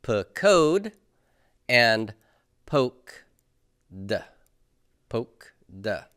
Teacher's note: So because of the closed syllable, my holum has to reduce to a short vowel, which is kametz ketuf. They're both going to sound the same. That is, they're both going to sound like O.